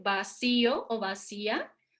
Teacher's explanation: Nosotros al decir vacío o vacía, pronunciamos con mayor potencia la I, entonces tenemos que separarla de lo que pudo haber sido un diptongo con la A.